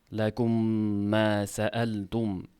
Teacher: Undan keyingi soʻzidagi mim harakatli ya'ni fathali. Mana shuni birinchi mim ikkinchi mimga kirgizilapti. Shadda bilan o'qilinapti. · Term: idg'om